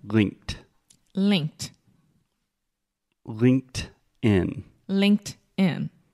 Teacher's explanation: imagine you are putting a t on the end